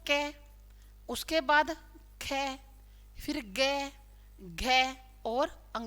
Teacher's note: ये पांचों कंठे वर्ण होते हैं, यानी कि जिनको बोलते समय हवा का परिसर कंठ में रहता है